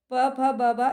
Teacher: ये ओष्ठ को स्पर्श करते हैं ना, ओष्ठ से बोले जाते हैं